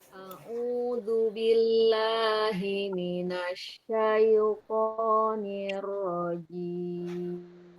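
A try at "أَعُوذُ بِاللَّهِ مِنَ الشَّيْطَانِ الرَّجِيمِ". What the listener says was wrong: Coba rokhawah shinnya yang jelas lagi.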